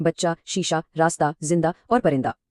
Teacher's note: بولنے میں یہ محض زبر یا الف جیسی ہلکی سی آواز دیتی ہے۔ لکھائی میں پورے موجود ہے مگر اپنا شور نہیں مچاتی۔ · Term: ہائے غیر ملفوظی